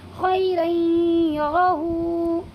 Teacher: ٹھیک ہے، یعنی یہاں پر بھی دو زبر کی تنوین کے بعد یہ یا آیا ہوا ہے، اسی لیے اس میں ادغام ناقص ہوگا اور دو زبر کی تنوین کو یا میں بدل دیں گے اور غنہ کے ساتھ تھوڑا سا ناک میں لے جا کر کے پڑھیں گے